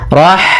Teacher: Pada lafal rahmani, ada ha sukun, maka di sini ha mempunyai sifat yaitu sifat hams, maka alirkan nafas kita.